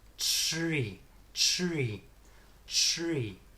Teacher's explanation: the tip up into the our position shree shree shree and about halfway through the r sound you'll turn your voice on